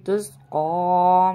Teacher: قاف کو کھڑا زبر کے ساتھ موٹا کر کے پڑھیں گے